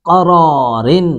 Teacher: قوف کو پر کریں گے، را کو بھی پر کر کے پڑھیں گے